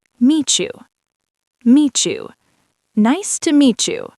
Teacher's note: let us break down the choo sound phrase. Meet you. T + Y.